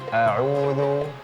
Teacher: Nah, kenapa? Karena nun ini ada dengungnya, sedangkan ain tidak ada dengungnya